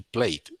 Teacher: Recuerden que cuando los verbos terminan en ed, casi siempre, en el 99% de los casos, esta E no tiene que sonar, simplemente suena el sonido de la D